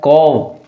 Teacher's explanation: और इसमें जो है क्या होता है, मैंने कहा था कि जो पहला वर्ण होता है, जो पहला वर्ण होता है क, वो क्या होता है, अघोष होता है। घोषत्व के आधार पर अघोष हुआ और प्राणत्व के आधार पर अल्प प्राण हुआ